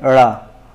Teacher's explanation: इनके उच्चारण में जो जीभ का ऊपरी भाग है वो उठकर मूर्धा को स्पर्श करता है और त्वरित गति से नीचे की ओर गिरता है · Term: उत्क्षिप्त